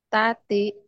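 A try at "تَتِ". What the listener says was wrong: Tati, nggak ada panjang. Tati, nggak yang tati itu udah bacaan panjang nanti, Mbak.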